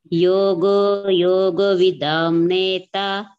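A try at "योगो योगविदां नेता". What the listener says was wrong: Vidam ku badala vidan maatirla. Adu mattum practice பண்ணுங்க பகினி. இன்ன சொல்லணும், விதாம்க்கு பதிலா விதான் பண்ணணும். We can say makara as well as nakara, but I will prefer the fifth letter of each varga.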